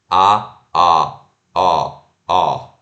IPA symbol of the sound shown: ɑ